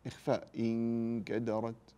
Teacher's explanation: كلمه انكدرت نون بعدها كاف اخفاء